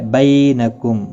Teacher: یالین ہے، تھوڑا نرمی کے ساتھ کھینچ کر ادا کریں گے